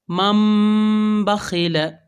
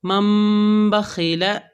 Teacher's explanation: جیسے کہ من بخیل، اصل میں یہاں پر تھا میم نون زبر من بخیل، مگر یہاں پر یہ نون ساکن کے بعد با آیا تو نون کو ہم نے کنورٹ کیا ہے میم میں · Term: اقلاب